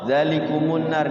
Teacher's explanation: Jadi bacanya zalikumun nar, mimnya didomahkan karena di sini tuh waqaf ya